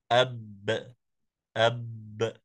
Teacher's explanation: نلاحظ ان الحرف يمسك عند بدايه النطق به وعند التباعد تخرج القلقله عند تباعد الشفتين تخرج القلقله اب اب دون ان يصاحبه ذلك